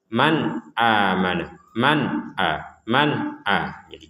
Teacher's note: Hamzah maka kita membacanya dengan jelas man man a man a jelas itu artinya tidak ada samar tidak ada dengung